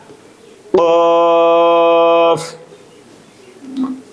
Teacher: কফের মাখরাজ জিহ্বার গোড়া উপরের তালুর সঙ্গে লাগিয়ে উচ্চারিত হয়।